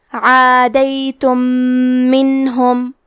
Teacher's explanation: ہم پہلے میم کو دوسرے میم میں ملا کے ایک ہی میم غنہ اور تشدید کے ساتھ پڑھیں گے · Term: ادغام متماثلین صغیر